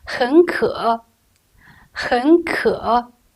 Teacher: the pronunciation of the first character 很 should be changed into the second tone